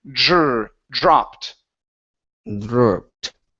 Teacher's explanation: give me a Dr sound so a j and an R together